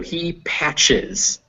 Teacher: ch is kind of equal to a t plus an sh sound